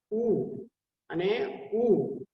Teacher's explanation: બંને હોઠ આપણે એને ભેગા કરીને આપણે એને બોલી શકીએ. ઓષ્ઠ્ય એને કહેવામાં આવે છે.